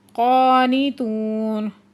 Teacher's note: قاف حروف مستعلیہ میں سے ہے، اس کو پورا آواز سے پڑھیں گے